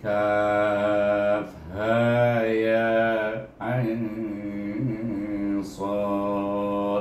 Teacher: Kaf ini panjangnya 6 harakat, Ain 6 harakat, Sad pun 6 harakat, Ha Ya 2-2.